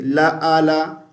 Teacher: عین کو حمزہ نہیں پڑھیں گے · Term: عین کی آواز